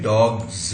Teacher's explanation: तो बोलने में डॉग्स आएगा, ये ज है, ये डॉग स नहीं हो सकता। आप चाहोगे तो नहीं बोल सकते हो डॉग स, ये डॉग ज ही बनेगा।